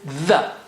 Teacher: we bring the tip out a little bit, a millimeter. Okay, not too much.